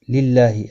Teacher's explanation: للہ اللہ کا لام زیر کی وجہ سے باریک پڑا جائے گا، اس کے اوپر کھڑی زبر بھی ہے، ایک الف کے مقدار کے برابر کھینچ کر پڑھیں گے۔